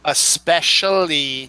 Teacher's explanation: that es just somehow gets people to just make it ex